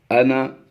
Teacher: یعنی یہ بغیر الف کے یہ انا پڑھا جائے گا، لمبا نہیں کریں گے